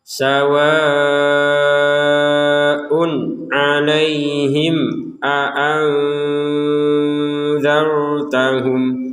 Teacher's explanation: Sawa'un 'alaihim. Ada tanwin atau dhammatain di sini bertemu dengan huruf ain, maka kita membacanya dengan jelas. Jadi sawa'un 'alaihim, jangan dibaca dengan samar sawa'un 'alaihim atau dengung sawa'un 'alaihim.